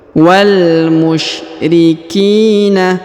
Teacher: Huruf ki yang ini dipanjangkan 2 harokat karena di depannya terdapat ya sukun.